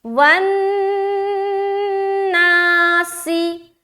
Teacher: ایکتی بالکل جلد آگے، والناسی، واو نون زبر، ون نون کے اوپر شد ہے، رکاوٹ ہوگی جسے کہا جاتا ہے غنہ کرنا، والناسی، سین میں بالکل سیٹی ظاہر ہوگی، سی سی سی سی سی، ٹھیک ہے۔